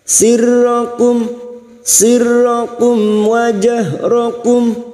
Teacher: mim sukun bertemu wawu idhar safawi, mim sukun dibaca jelas tanpa mendengung.